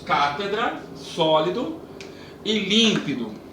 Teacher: não é a última sílaba, não é a penúltima sílaba, é a antepenúltima sílaba que é a sílaba tônica